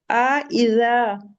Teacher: जब हमजा कहते हैं तो जो हमारे वोकल कॉर्ड्स होते हैं वो क्लोज हो जाते हैं, ठीक है, वो बंद हो जाते हैं, उनसे एयर कैरी ऑन नहीं होती।